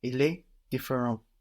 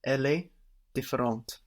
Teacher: So here we hear the T on the end now, because we have the E for the feminine on différente.